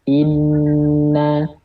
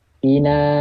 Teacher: 2 harokat guna itu lebih panjang dibandingkan 2 harokat mad